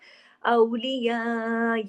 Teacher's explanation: अगर रुकते हैं तो हमजा की आवाज आपके गले में आना चाहिए